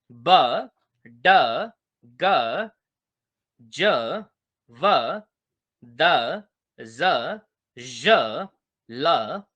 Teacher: produce करने में vocal cords vibrate करती हैं, उनको बोलते हैं वॉइस्ड कॉन्सोनेंट्स